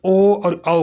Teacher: कंठोष्ठ में कंठ प्लस ओष्ठ दोनों से बोलते हैं ना, तो कंठोष्ठ कहते हैं इसे।